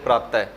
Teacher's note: और जब हम शब्द के अंदर इसका प्रयोग करते हैं तब इसका जो उच्चारण किया जाता है वो ह की तरह किया जाता है, ह ध्वनि की तरह किया जाता है। विसर्ग का उच्चारण ह की तरह किया जाता है